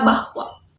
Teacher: W adalah semifokoid bilabial bersuara dan lepas. Kedua buah bibir dikatupkan, ujung lidah diangkat tinggi-tinggi dan ditarik ke belakang.